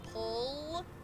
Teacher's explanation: A dark L is in the back, sort of like when you say pull, if you feel that L is further back.